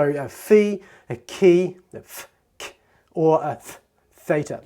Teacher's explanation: really they don't use any voice, but they're slowing the air down rather than stopping it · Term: aspirates